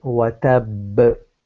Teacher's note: So if I stop, I will say watab. So there's a strong qalqala there.